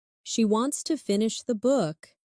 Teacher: Stress wants and book. And let to finish the be soft and fast.